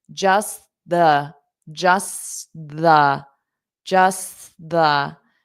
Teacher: notice we have just and then the because they both start with t. You can just use one t.